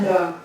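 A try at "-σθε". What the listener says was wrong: Sta. Sta. You gotta say the S in front of it. Not the, but sta. Sta. Put an S in front of the.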